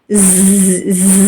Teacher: جب راس لسان ثنایا سفلا پہ لگے، علیہ پہ نہیں، ثنایا سفلا پہ، ثنایا سفلا کے مسوڑوں کے کناروں پہ، تب زا ادا ہوتا ہے. زا، اور کنارے پہ لگے گا، اندرونی حصوں میں نہیں، اوپر ٹچ ہوگا، اوپر.